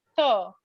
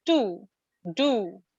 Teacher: Th comes under dental one, th, and t comes under alveolar.